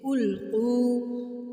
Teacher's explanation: اِذَا مد ہے تو کھینچو گے، القو قاف ہے 2 نقطے والا تو حلق سے آواز نکالو گے